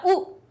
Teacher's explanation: ऊ का उच्चारण स्थान क्या हुआ हमारा, ओष्ठ हो गए · जैसे ही बोला ऊ, तो देखो आपकी चोंच बन गई। वो कैसे बनी, होंठ, होंठ से, क्योंकि वो हमारी वायु टकरा रही है।